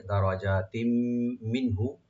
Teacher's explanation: দারাজাতিম মিনহু, দাল ওপেন রাখবেন, রাটাকে ডিপ করে ওপেন রাখবেন, জিমটাকে রাইট দিয়ে একালে টানবেন। দারাজাতিম, এখানে তার যে তানবিন আছে, মিম আসছে এখানে তানবিনের সাথে, এখানে ইদগাম উইথ গুন্না হবে।